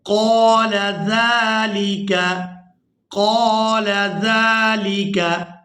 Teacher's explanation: क़ाफ को पुर करके अदा करेंगे। दो नुक्तों वाला क़ाफ जो है ये हमेशा ही पुर अदा होता है।